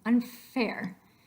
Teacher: Can you hold out the N, but your lips are all ready for the F? It's a labiodental. Try that. Unfair.